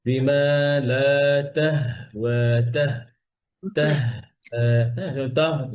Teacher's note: হা যেন ওয়ার মতো গোল না হয়ে যায়